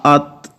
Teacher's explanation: اب غور سے آواز کو سنیں، حمزہ زبر تا ات، آخر میں جو تھے کی آواز ہلکی سی نکلتی ہے نا، اس کو کہتے ہیں صفت ہمس.